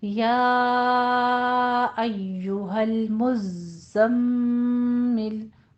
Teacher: تیسری تشدید جو میم کے اوپر آ رہی ہے اس کو غنہ واجبہ کریں گے، یعنی 2 کاؤنٹ کرنے ہیں